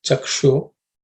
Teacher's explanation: that sh is cerebral sh, so just pay attention to that.